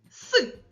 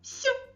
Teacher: Я називаю твердий приголосний звук а ви змінюєте його на м'який приголосний